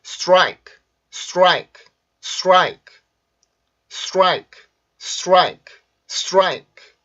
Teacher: 우리나라 말에서는 이게 스트라이크지만 여기에서 마찬가지로 폐세음, R 발음, 강세 모음이 있기 때문에 이때 여기 T 발음이 R 발음의 영향을 받아서 입술이 쭉 나오게 돼요